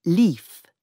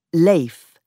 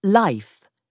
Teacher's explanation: in Chaucer's time, the word for life was pronounced leaf, and this became leif, and then life by the 18th century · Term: long vowels began to change